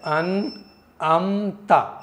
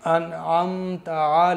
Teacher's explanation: अनमता इस तरह से नहीं पढ़ेंगे यहां पर आईन है तो आईन की आवाज साफ-साफ आनी चाहिए कहीं ऐसा ना हो हमजा अदा हो जाए हमजा की आवाज है अन अमत और आईन की आवाज है